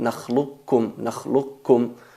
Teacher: No hay que pronunciar el qaf en el caso de nakhluqukum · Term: idgham al-mutaqaribain